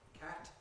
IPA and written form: kæt (cat)